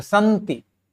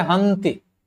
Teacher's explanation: Avesta में, स का तो ह होता है